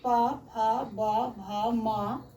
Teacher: ओठ से उ और प वाला प फ ब भ म का उच्चारण स्थान ओठ से होता है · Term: ओष्ठ